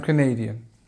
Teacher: Canadian again stress in the second